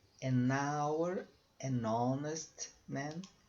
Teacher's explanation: Você emenda o N com a vogal que vem a seguir.